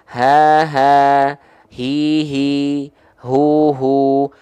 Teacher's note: dia punya sifat hams juga mengalir nafas juga tapi karakteristik Titi lafaz yang mengalir itu biasa aja enggak berbisik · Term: Ha besar